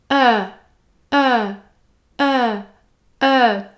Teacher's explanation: vous devez tout d'abord prononcer le eu ouvert vous devez ouvrir la bouche eu et le dernier son prononcé est le son /j/ /j/